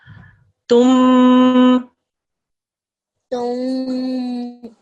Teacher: you do the 2-second guna sound on the mim mushaddad. And what happens is the tanween combines with this to make a tum.